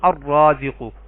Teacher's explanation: را حروف شمسی میں سے ہے تو ال کا لام نہیں پڑھا گیا